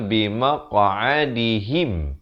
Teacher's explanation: Ha baris kasrah bunyi hi, bukan bunyi he.